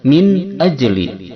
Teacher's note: Cara membaca idhar halqi ini yaitu membaca nunnya dengan jelas tanpa dengung kesamaran.